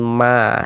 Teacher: Ini ma dibaca panjang namanya adalah mad jaiz munfasil